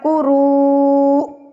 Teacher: قروء کو لمبا کر کے نا، یہ بڑی مد ہے نا تو اس کو 4 حرکات کے برابر کھینچیں گے.